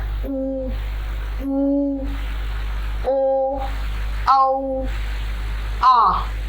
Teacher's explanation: वृत्ताकार, वृत्ताकार का मतलब होता है गोल, यानी हमारे होठों की जो शेप बनती है वो गोल बनती है